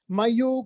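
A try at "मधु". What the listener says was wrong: Madhu, not Mayu, Madhu.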